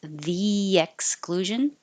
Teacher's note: your tongue goes high for the E and then slides down for the Y.